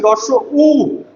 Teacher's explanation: আর যখন আমি উচ্চারণ করছি রস উ তখন ঠোটটা আমার গোলাকার হয়ে যাচ্ছে। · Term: গোলাকৃত